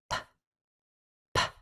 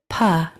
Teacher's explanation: P is a voiceless sound. There's only air that comes out, and it sounds like a quick little pop.